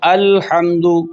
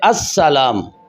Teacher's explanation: الف لام کلمے کے شروع میں ہے لیکن لام سین میں داخل ہو رہا ہے، لام پڑھا نہیں جا رہا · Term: لام تعریف کا ادغام